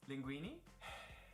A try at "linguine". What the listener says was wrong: Linguine. Linguine. There's an E.